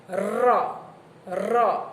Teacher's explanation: જીભનું ટેરવું દાંત નજીક રહી હવામાં કંપ પેદા કરતું હોવાથી એને રને દંત્ય પ્રકંપી કહેવાય.